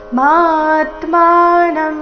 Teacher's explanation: ಮಾ ದೀರ್ಘ ಬಂದು ಸೌಮ್ಯ ಆಘಾತ